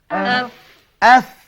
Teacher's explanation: Dia angkat ke gigi hadapan yang di atas. Itulah dia yang dikatakan makhraj fa.